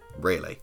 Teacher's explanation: its meaning pitch does alter meaning in non-tonal languages like English think about the difference between really and really with the pitch rising at the end obviously indicating a question